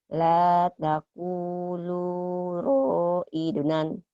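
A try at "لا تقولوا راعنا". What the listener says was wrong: La taqulu ra'ina. Bukan ra'inan ya. Ra'ina. Barisnya satu.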